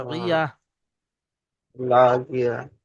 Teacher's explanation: নয়, এখানে গোল তা এসছে, গোল তায়ের হ্যাঁ উপরে দাঁড়াতে হলে সেটা হা সাকিনের মতো পড়তে হয়, এখানে হা হয়ে যাবে এবং সাকিন হয়ে যাবে।